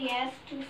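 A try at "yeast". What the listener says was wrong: यस नहीं वो ईस्ट ईस्ट पढ़ते हैं इसको या से लिखते हैं ईस्ट यीस्ट पढ़ते हैं इसको या से यीस्ट या यीस्ट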